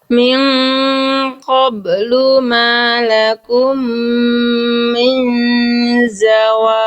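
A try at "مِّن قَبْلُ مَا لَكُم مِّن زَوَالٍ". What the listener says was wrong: Oke, bagus ya.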